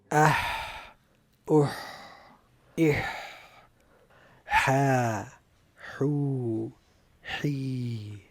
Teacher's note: The letter Ha is characterized by hums and rakhawah, so the sound and breath both flow easily.